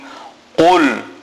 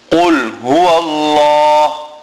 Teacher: Qaf must be pronounced from the furthest point in the mouth, right in the back of the mouth.